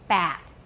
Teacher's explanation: with bat, our jaw goes down quite a bit, right? Because the tongue is low and we need to open our jaw to let the tongue down.